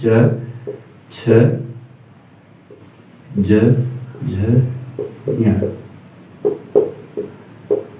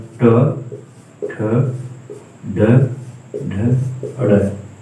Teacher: कंठ से बोले जाने वाले आपके जो है ये क वर्ग आते हैं, तालु से च वर्ग और मूर्धा से ट वर्ग